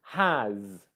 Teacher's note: in English it's spelt like an S, but it's pronounced like a Z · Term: Z sound